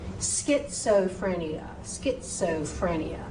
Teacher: that SCH, you say the S wants to be heard, and then the CH is a K sound. So SCH is a SK sound.